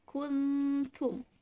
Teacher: Jadi nun sukunnya lidahnya harus sudah taruh di huruf ta.